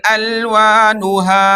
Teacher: ایک الف کی مقدار کھینچ کر کے رک گئے